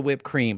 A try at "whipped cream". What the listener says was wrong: you're saying it weird why are you putting so much emphasis on the H